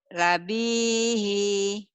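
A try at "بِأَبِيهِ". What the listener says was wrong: Iya, itu bukan lam ya. Abihi.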